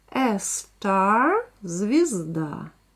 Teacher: То есть говорите в конце а, a star, и немножко язык кверху.